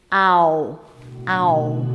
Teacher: This vowel begins with a and glides to o.